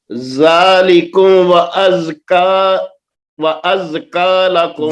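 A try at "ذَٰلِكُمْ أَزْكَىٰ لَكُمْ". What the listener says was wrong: ذالکم نو نے واو نہیں ہے. ذالکم ازکا لکم.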